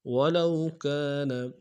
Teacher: ولو میں واولین بغیر کھینچے پڑیں گے